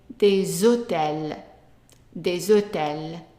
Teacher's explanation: we pronounce them together and the S becomes like a Z.